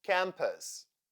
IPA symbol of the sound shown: ə